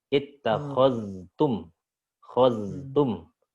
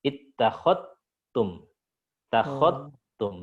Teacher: Tapi kalau Syu'bah dia mengidghamkan secara kamil, jadi zalnya hilang, sudah melebur ke ta. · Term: idgham kamil